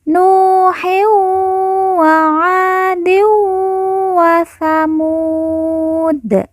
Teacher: din bertemu dengan huruf wawu, maka tanwin dileburkan, langsung masuk huruf wawu, kemudian ditekan, ditahan 2 harokat dan didengungkan.